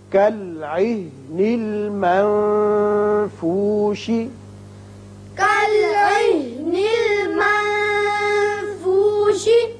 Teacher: نون پر اخفا ہوگا، آگے فا حروف اخفا میں سے ہے